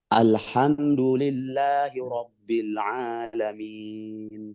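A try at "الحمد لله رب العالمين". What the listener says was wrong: Dalnya turunkan.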